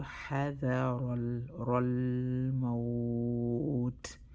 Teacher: Ra treated like a round letter and hold the lam sukun for 1 second. Lan Omar حذر, bring out the air sound to give the letter its haq.